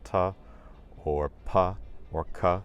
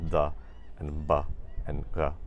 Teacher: a lot of consonant sounds that were previously unvoiced in Latin, such as ta or pa or ka, they gain voicing in the evolution into Spanish, and they become the and ba and ga.